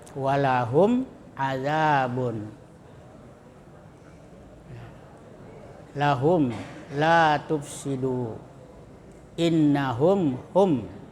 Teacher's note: Cara membacanya mim disuarakan dengan terang dan jelas di bibir serta mulut tertutup. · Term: izhar syafawi